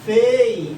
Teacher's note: o E é forte, é vogal, só que o I é fraco, é uma semivogal